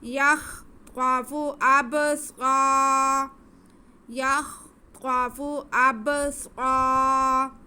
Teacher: صاد کی آواز کو ہم ایک الف کے برابر کھینچ کے پڑھیں گے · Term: الف مدہ